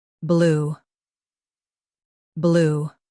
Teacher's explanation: Start with a soft B and stretch lou.